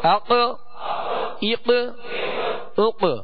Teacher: اس کو پر بھی پڑھنا ہے اور اس میں قلقلہ بھی کرنا ہے